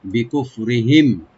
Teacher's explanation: বিকুফরিহিম, বি বলবো আর রাটাকে মাঝখানে একটু আমরা লাইট করে পড়বো আর মিম সাকিন এখানে অবশ্যই আমরা এজাহার করবো, এখানে গুন্না হবে না